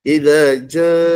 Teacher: mak wajib mutasil mesti dibaca panjang 5 harakat